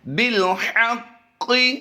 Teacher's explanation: قاف green colour میں ہے، اس پر شد جو ہے یہ آسمانی کلر میں ہے۔ یہاں پر قاف کو پر بھی کریں گے اور یہاں پر قلقلہ بھی کرنا ہے